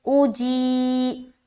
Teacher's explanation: جی، یا ساکن سے پہلے زیر ہے، یا مدہ ہوگی، یا مدہ کو ایک الف کی مقدار کے باقدر کھینچ کر پڑھیں گے